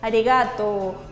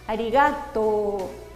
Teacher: esta letra U la usamos para alargar el sonido O. Entonces tenemos que leer una O larga